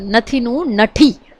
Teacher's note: થ ની જગ્યાએ ઠ બોલાય